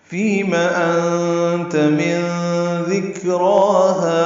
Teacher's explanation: فیم فی آئے مدہ ہے اور میم کے زبر کو جلدی پڑھنا ہے